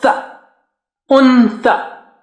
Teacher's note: you have to use the tongue tip and just bring it out, the makhraj, little bit between the teeth, or touch the top teeth, little bit of it is out